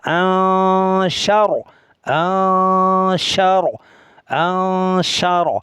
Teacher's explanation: ওয়াকফ করলেও র সাকিন হবে, তাও পুর হবে